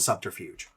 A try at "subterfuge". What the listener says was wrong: I love that you pronounce the B in subterfuge. Yeah, you say subterfuge and I say subterfuge.